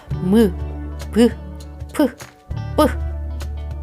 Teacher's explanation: 미음 가죽은 입술이 붙었다 떨어져요.